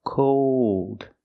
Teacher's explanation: the long o plus the dark L